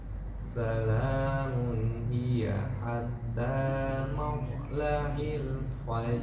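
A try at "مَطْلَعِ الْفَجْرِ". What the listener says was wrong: Jangan hati-hati, maknya jangan sampai tebal. Matla'il fajr.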